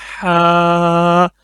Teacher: हरूफ हल्की में से है जो हलक का दरमियान वाला हिस्सा है वहां से निकलता है